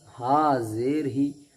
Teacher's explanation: उसके बाद प्लस हा ज़ेर ही, हा के नीचे ज़ेर है, ज़ेर को जल्दी पढ़े, थोड़ा भी ना खींचे, मारूफ पढ़ें और मजहूल आवाज़ से बचें